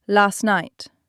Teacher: The T in last disappears. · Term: elision